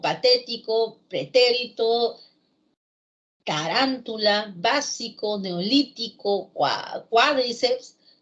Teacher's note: son palabras que llevan la fuerza de voz en la antepenúltima sílaba y que por eso se llaman pues palabras esdrújulas y las esdrújulas todas se tildan.